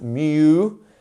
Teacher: Music has a lengthened U sound